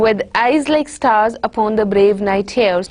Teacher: this is a 10-syllable lines in which every other syllable is stressed. So one syllable is unstressed, the other one is stressed, then one more unstressed, stressed, and so on. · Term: iambic pentameters